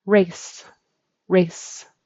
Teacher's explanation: It's a final s unvoiced.